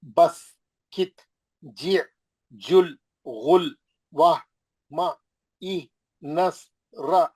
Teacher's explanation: जैसे ये यहाँ पर उसने टेस्ट कराया, यहाँ पे बस, कित, जी, जुल, गुल, वाह, मा, ई, नस, रा, यानी जहां जज़म वाले हर्फ को क्या करते, पिछले वाले हर्फ की हरकत से मिला के पढ़ते और आवाज एकदम रुक जाती, ठहर जाती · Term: साकिन हर्फ